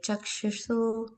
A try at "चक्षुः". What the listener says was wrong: Sorry, that is chakshu, not chakshushu. It's chakshuhu only.